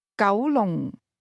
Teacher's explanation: 九 is spoken with a mid-rising tone